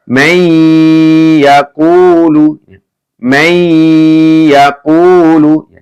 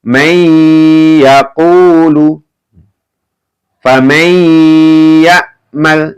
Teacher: Dibaca masuk dengan mendengung ya. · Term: idgham bi gunnah